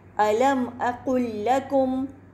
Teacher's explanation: لام ساکنہ کے بعد ایک اور لام ہے, یہاں پر بھی ادغام ہوگا, پہلے لام کا مخرج اور صفت دونوں ختم ہو جائیں گے